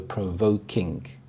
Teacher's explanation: The primary stress is on the second part of the compound word, voke, so provoking.